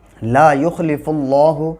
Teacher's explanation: اللہ کے لام سے پہلے پیش ہے اس لیے پر پڑھا جائے گا